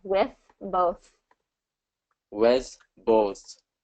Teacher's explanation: I'm hearing an S instead of a TH. With both. So it's all about where that tongue is.